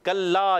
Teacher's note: लाम पे तशदीद है, मुशद्दद हरफ हमेशा रुक कर अदा करते हैं। ज़रा जमाव के साथ पढ़ेंगे।